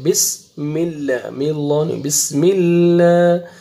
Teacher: جب اللہ سبحانہ و تعالیٰ کے نام سے پہلے زیر آئے گا تو لام کو باریک کر کے پڑھتے ہیں